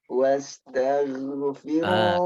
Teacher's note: Ghain mengalir suara tebal dan nggak ada angin.